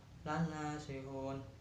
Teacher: bacaan mad arid li sukun sebab mad bertemu huruf hidup dibaca wakof, panjangnya satu alif sampai 3 alif atau 2 sampai 6 harokat